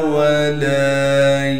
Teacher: لام کے بعد الف مدہ ہونے کی وجہ سے لام کو ایک الف کے مقدار کھینچیں گے